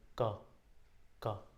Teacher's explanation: क वर्ग च वर्ग ट वर्ग त वर्ग और तो इसमें देखोगे ना कि या तो जीभ या तो होठ यह टच करेंगे ही करेंगे आपके किसी ना किसी उच्चारण स्थान पे जैसे कह रहे हो क तो जीभ है आपके गले के पास कंठ के पास स्पर्श कर रहा है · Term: स्पर्श व्यंजन